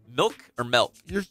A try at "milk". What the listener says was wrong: That's wrong. You just said milk again, like elk. But you're wrong. Milk.